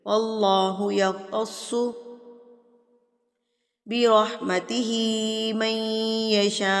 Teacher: अल्लाह से पहले अगर ज़बर आ जाए तो अल्लाह को जो है वो पुर करके पढ़ा जाता है